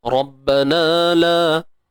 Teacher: Huruf ra kita baca dengan tebal, tuan-tuan. Ra ni kita baca dengan tebal.